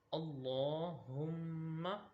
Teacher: اب اللہ تعالیٰ کے لام کو موٹا پڑھا جاتا ہے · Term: لام موٹا